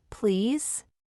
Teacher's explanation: please falls gently at the end